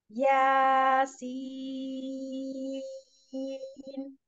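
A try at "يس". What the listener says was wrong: माशाल्लाह, परफेक्ट।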